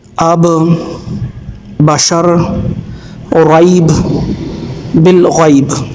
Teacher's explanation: आप दोनों होंठों के तर हिस्से को आपस में मिलाएं तो हर्फ बा अदा होगा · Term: हर्फ तर